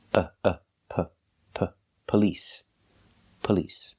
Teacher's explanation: do not say police it's police police because the stress is on the second syllable the first syllable is pronounced relaxed